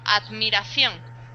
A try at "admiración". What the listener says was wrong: Abre más la boca.